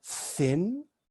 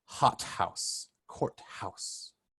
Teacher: theta can be pronounced either like a thin or as a breathy t